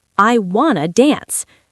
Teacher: But in connected speech, native speakers blend these two words together. They drop the T sound completely. So want to becomes wanna.